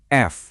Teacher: Ada bunyi geseran kan? Ada friksi kerasa di bibir kalian. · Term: bunyi fricative